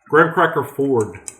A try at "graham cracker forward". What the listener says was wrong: Graham cracker Ford. Did you just say Ford? Ford? Graham cracker Ford? Graham cracker Ford? Graham cracker forward?